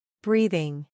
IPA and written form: brɛθ (Breath)